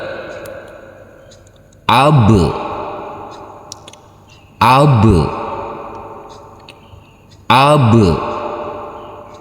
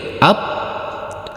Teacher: ada huruf alif yang berfathah a bertemu dengan huruf ba sukun maka huruf ba nanti kita pantulkan ab ab ab kita pantulkan tidak boleh up harus kita pantulkan